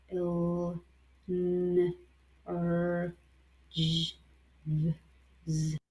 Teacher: If we have voiced sound, which are all the contrary, here if you pronounce L, there is vibration on your throat